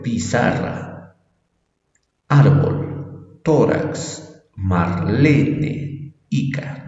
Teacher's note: la mayor fuerza de voz en la penúltima sílaba